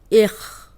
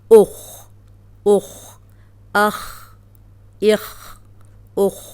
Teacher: اب یہ خو موٹا ہے، جزم کے ساتھ بھی ہم موٹا ہی پڑھیں گے